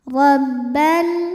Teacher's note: Ra dibunyikan secara tafkhim karena berbaris fathah, maka ra dibunyikan dengan tebal.